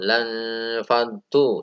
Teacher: Yang selanjutnya yaitu lan faddu, ini ikhfa seperti lintah tadi, yaitu nun sukun diikuti dengan huruf fa. Dibaca di antara N dan B, samar ya, ini samar.